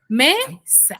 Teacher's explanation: ¿Dónde está la mayor fuerza de voz? En me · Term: sílaba tónica